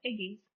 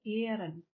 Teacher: shows the Old English palatalization because the g has turned into the palatal y